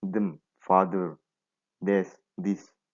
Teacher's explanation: we also need to create friction between the tongue and the upper teeth and the friction is created throughout the release of the pressure